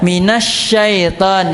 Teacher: Antum pakai sin yang harusnya syin minasyaitan